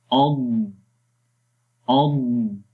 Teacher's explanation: اس کو آپ نے اد ایسے نہیں پڑھنا، صفت قلقلہ اس کے اندر نہیں کرنی. کچھ لوگ ہوتے ہیں وہ صفت قلقلہ کر دیتے ہیں، پڑھتے ہیں اد اد، تو وہ غلط ہے.